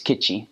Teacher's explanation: K-I-T-T-I. The T's in Pohnpeian make a CH sound, so it's Kichi.